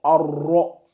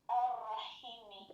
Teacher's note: dès que c'est emphatique, on doit sentir le O.